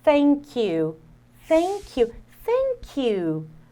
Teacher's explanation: Aqui o TH é o TH desvozeado, ou seja, ele não produz um som. A gente está soprando, é um arzinho que sai, tá? E o símbolo fonético dele em dicionários online é esse daqui que você vai ver.